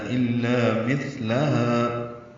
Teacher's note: الا میں لا الف مدہ ہے. مثلہا میں تھا ساکن پہ ہمس ہے اور تھا نرمی سے پڑھا جائے گا. زبان کی نوک ثناء علیہ کے اندرونی کناروں سے لگائیں گے.